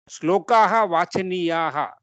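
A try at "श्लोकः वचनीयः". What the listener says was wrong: Correct. Shlokaha vachaniyaha.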